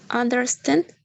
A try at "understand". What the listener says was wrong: Good. Understand. Great. The stress in the last part, right?